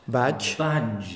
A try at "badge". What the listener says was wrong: Badge. Badge. You're doing a slight extra syllable after the j, yeah. But that can help you. Badge. We can do it with that and then we can delete it later. Badge.